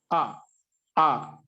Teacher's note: అ ని ఉచ్చరించడానికి కంఠం సహాయపడుతుంది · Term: కంఠస్థానం